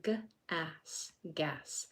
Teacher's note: don't let that pucker form and that R will not be in there. So in grass we have g a s.